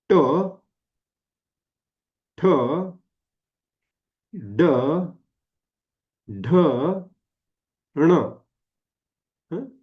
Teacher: मुर्धा अस म्हणतात एकदा करून बघूया ट ठ ड ढ ण ण म्हणताना त्याच ठिकाणी जीभ टेकते जिथे ती ट ठ ड आणि ड ला टेकलेली आहे फक्त नाकातून आवाज निघालेला आहे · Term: अनुनासिक